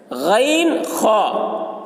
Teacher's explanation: غین، خا ان کا مخرج ابتدائی حلق ہے، یعنی منہ کی طرف والا حصہ، منہ جو اوپر ہے تو اوپر والا حلق کا جو حصہ ہے وہاں سے غین اور خا یہ ادا ہوتے ہیں۔